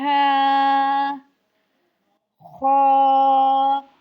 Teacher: خا میں ہونٹ گول نہیں ہونے چاہیے، اس بات کا خاص خیال رکھنا ہے کیونکہ خا جو ہے وہ حروف مستعلیہ میں سے آ رہا ہے، تو اس کو خا کو پر پڑھیں گے یعنی موٹا